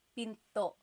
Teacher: Do you hear the glottal stop when I say pinto? Pinto. So it's not pinto.